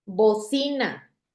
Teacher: ¿Dónde está la sílaba tónica? En sí, que es la penúltima.